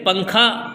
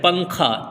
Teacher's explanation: نون کی آواز کو ناک میں چھپا کر پڑھنا چاہیے. نوک زبان تالو سے ہٹا کر جیسے اردو میں پنکھا کے نون کو پڑھتے ہیں اخفا کی مقدار 1 الف ہے.